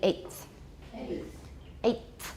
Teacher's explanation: Eighth. The T is going to be dental because it's influenced by the th.